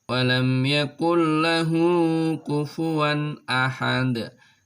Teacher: suara tanwin suara non sukunnya suara tanwinnya hilang masuk ke huruf setelahnya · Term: idgham bilagunnah